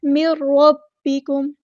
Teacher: نون ساکن کے بعد را آیا ہے تو ہمارے پاس یہاں پہ ادغام بلا غنہ ہوگا